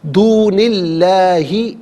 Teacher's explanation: من استطعتم من دونی اللہ ملا کر پڑھنے کی صورت میں دونی میں نون کے نیچے زیر سے اس میں اللہ کی حرف لام کے ساتھ ملائیں گے, درمیان سے الف حمزہ کو حذف کیا جائے گا. اس میں اللہ کی حرف لام سے پہلے والے حرف نون کے نیچے زیر ہے تو اس میں اللہ کی حرف لام کو باریک کر کے پڑھا جائے گا